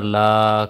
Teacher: کھڑا زبر کو کریں گے ایک الف کے برابر لمبا